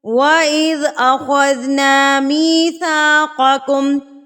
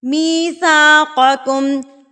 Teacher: تو جس نے پڑھا ہوا ہوتا ہے وہ اس کو تھوڑا سا منہ کو گول کر لیں گے نا. آپ تھوڑا سا پاؤٹ لائک منہ کو اگر کر لیں گے تو آپ کا جو قاف ہے وہ پر ادا ہوگا